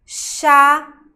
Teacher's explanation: O H é mudo, mas ele junto com outra letra tem o som de X. Charada. Então, a letra C e H juntas vão formar um único fonema, ou seja, uma única letra, um único som.